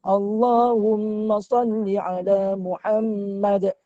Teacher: Muhammad juga mim yang bersyaddah wajib al-ghunnah. Wajib kena dengung.